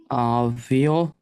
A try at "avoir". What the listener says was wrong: ভি ও I, ভোয়া, হ্যাঁ, ওর সাথে আর অ্যাড করতে হবে, ভি ও I ভোয়া আর ওয়াখ, avoir, okay,